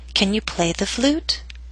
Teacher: It first hits the ground and then bounces up into the air. So down a little bit on play and then start rising up, up, up until the end of the question. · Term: rising intonation